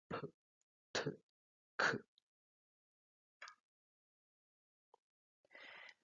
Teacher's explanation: Y también les dije que en español esta plosión es muy leve, por lo tanto tenemos sonidos como t, k, mientras que en inglés tienen una plosión más aspirada y producen p, t, k.